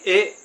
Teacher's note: इसको बोलेंगे एक झटके के साथ क्योंकि यह छोटा ए की मात्रा है दोस्तों। छोटा ए है इसको बोलेंगे ए।